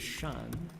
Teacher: So this word here is shan, fourth tone.